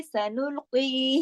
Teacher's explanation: उसमें आते हैं। और कौफ मोटा है, सनुल्की, इसको मोटा पढ़ेंगे, इसका जेर लगा हुआ है लेकिन उसके बावजूद भी उसको मोटा ही पढ़ेंगे।